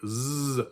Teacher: in standard German it would be a voiced sibilant a ZZZ sound